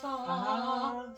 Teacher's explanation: There's a little TH sound, not like a hard Z